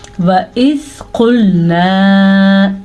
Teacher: قاف موٹا ہے تو موٹا ہی پڑھیں گے، اگر ہم اس کو باریک کاف کریں گے تو یہ لفظ غلط ہو جائے گا۔